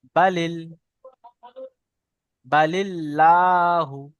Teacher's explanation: তো আল্লাহ শব্দকে বারিক করে পড়তে হবে। বারিক মানে লা পড়তে হবে।